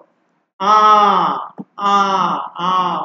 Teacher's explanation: মুখের একদম মানে খোলা মুখে দীর্ঘ আ বলতে হবে আমাদের, খোলা মুখে গলা থেকে উচ্চারণ করবে আ।